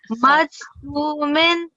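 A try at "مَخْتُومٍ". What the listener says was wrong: So this is kha, remember? The dot is on the top. So makhtum, so the kasratain is taking the pausing.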